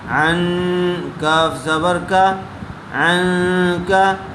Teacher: نون ساکن کے بعد حروف اخفا میں سے کاف آیا ہوا ہے، اس لیے غنّے کے ساتھ اخفا کر کے پڑھیں گے